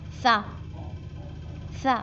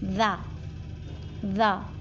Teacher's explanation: زال میں آواز جاتی رہتی ہے. ذا، سا میں ہوا باہر جا رہی ہے اور ذا میں ہلکا سا وائبریشن ہو رہا ہے اور آواز آ رہی ہے